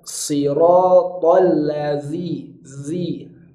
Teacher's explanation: Di sini ada huruf zal, siratal lazi, zi. Jadi bunyi hurufnya itu mengalir, itu namanya sifat rokhwah.